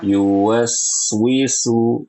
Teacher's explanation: Ada sin sukun di situ, harus dialirkan.